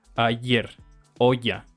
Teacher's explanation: hace una y un tanto más apretada que se simboliza con esta J con colita eh según el